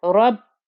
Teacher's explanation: Ra with a fatha, nice thick and heavy ra, joining to the ba with the shadda. Give enough time for there to be 2 bas there.